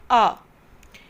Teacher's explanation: इसका उच्चारण आ और ओ के बीच की ध्वनि के रूप में होता है। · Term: आगत ध्वनि